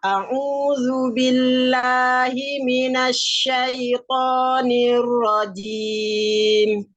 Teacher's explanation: jimnya jangan sampai ada desisnya